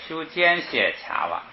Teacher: 斜卡瓦这个尖斜呢，好像要读轻声，所以就弱下来了。卡瓦又是一个动词，又高起来了